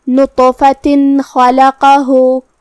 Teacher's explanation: یہاں بھی حکم ہے اظہار، تو ہمیں یہ حکم کو بغیر غنہ سے نون ساکن ظاہر کرتے ہوئے ادا کرنا ہے